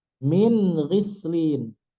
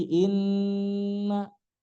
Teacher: min gislin tidak boleh ditahan seperti inna karena berjumpa dengan huruf tenggorokan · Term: izhar